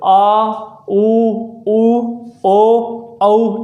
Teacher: आप देखेंगे इसमें जीवा का आपका आगे का हिस्सा काम कर रहा है। और पश्च स्वर वे होते हैं जिसमें जीवा का पीछे का भाग काम करे